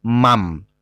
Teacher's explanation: Jadi merubah bunyi n menjadi m, merubah bunyi nun mati menjadi mim mati. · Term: iklab